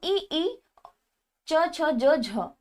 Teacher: ई, च, छ, ज, झ आदि का उच्चारण किससे होता है, तो तालव्य की सहायता से इनका उच्चारण होता है।